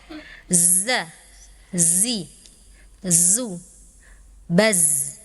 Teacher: Huruf zai itu punya sifat saofir ada desisnya